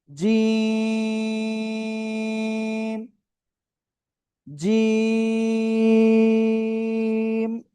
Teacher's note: জিহ্বার মধ্যখান তার বরাবর উপরে তালুর সাথে লাগিয়ে 3 আলিফ টানিয়া উচ্চারণ করতে হবে।